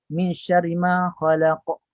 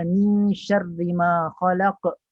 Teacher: kalau khalaq dipantulkan dengan huruf qaf itu dengan sifat isti'la'nya, maka itu bacaan yang baik.